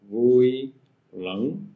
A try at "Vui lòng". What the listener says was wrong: No, you said up, you went up. Vui lòng. Lòng. Lòng. You went up. Lòng. So it's a mouth closing sound.